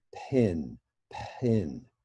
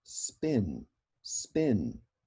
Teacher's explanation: this word pin, if you really listen to it, you are always having a puff of air, an aspirated P. · we actually do know how to make an unaspirated P, but we only do that, we only pronounce it when there is an S in front of it.